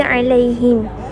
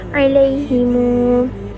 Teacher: mim jamak bertemu dengan huruf mutaharrik mempunyai dua wajah, iaitu yang pertama akan menjadi sukun seperti alaihim, ataupun silah dua harakat seperti alaihimu